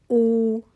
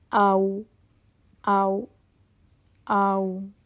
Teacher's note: यह आपके होठों से यानी के अशरफातान से अदा होती है। आपके दोनों होठों से अदा होता है वाव।